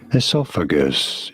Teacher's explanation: Oh. Esophagus, you do want to stress on the second syllable, on the saw syllable